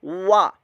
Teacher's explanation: जन्नातिम बिरब, बिरब, वा, वाव ज़बर वा, तो ये मुतहर्रिक है वाव, वाव होंठों की गुलाई से अदा कीजिएगा